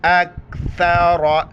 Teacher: سا کے وقت زبان باہر نکالیں گے، را کو موٹا کر کے پڑھیں گے